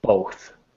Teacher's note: when you get to the TH sound, you don't feel any vibration